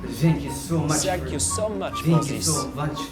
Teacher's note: fairly common for French speakers to change their th sounds to Zed's or essence because there is no th sound in French thank